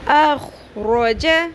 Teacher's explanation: خو کو بھی پر کرنا ہے، را کو بھی